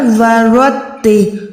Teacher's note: علیہ ورتل القرآن، ورتل، را جو ہے موٹی ہے، یہ تا باریک ہے، تو نہیں ہے، ورتل نہیں کر سکتے، یہاں پر ورتل، را کے ٹائم منہ کو گولا ہی کریں، تا کے ٹائم باریک رکھیں